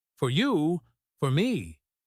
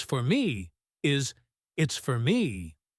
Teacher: if I say the gift is for you, not for me, then I will pronounce for strongly. For you, for me, but normally it's for me is it's for me. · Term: strong form